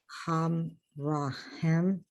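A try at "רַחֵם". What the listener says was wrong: Chaim. Chaim. It's an A sound. Chaim. Gotta get that guttural in.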